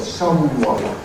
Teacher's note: the vowel and [ w ] are nasalized and the medial and final consonants are nasals